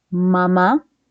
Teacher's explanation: claramente ves que el sonido pareciera que sale por la nariz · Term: nasales